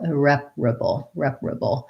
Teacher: Our BLE ending is our schwa and our dark L, or syllabic L.